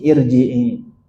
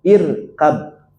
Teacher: Ya, di sini ada hamzah wasol. Nah, kalau ada huruf hamzah wasol berharokat kasroh menghadapi huruf ro yang sukun, maka ro sukunnya berubah menjadi tebal.